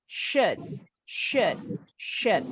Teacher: kalau dalam kalimat bunyinya bukan U lagi tapi E